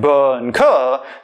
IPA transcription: b k